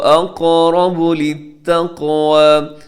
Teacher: اقرب قاف موٹا اور پلس قلقلہ بھی ہوگا، آگے را جو ہے وہ موٹا پڑا جائے گا.